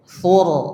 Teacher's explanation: tur dibaca dengan tafkhim. Ya, mengangkat suara ke langit-langit.